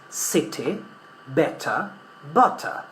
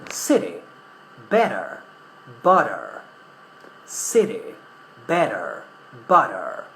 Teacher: However, in American English, when the letter T or the sound T is found in between other vowels, we pronounce it something similar to R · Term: intervocalic T